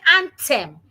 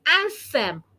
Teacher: Instead of saying anthem with my tongue inside, I need to say anthem with my tongue outside.